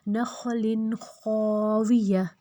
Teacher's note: جہاں پہ وقف آ جائے تو وقف والا جو لفظ ہے جہاں پہ ہم روک رہے ہیں وہاں پہ تا ہے تو وہ ہا میں بدل جائے گا ، نخل خاویہ، اب یہاں پہ جو تا ہے وہ ہا